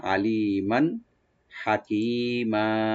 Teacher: এখানে মিম রূপে যে দুই জবর আছে, এখানে আমরা জাহার করব, গুণা হবে না, আলিমান হাকিমা, হাকিমা হাটাকে রাইট দিয়ে কাফ একালে টানবো।